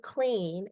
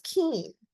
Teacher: 2 consonants side by side, the child drops one of those consonants and reduces the structure of the word. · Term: cluster reduction